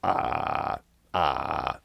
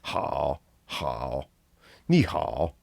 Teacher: they'll tell you it's a low tone but it's really just a vocal fry so it's like ha how ni just throw in some vocal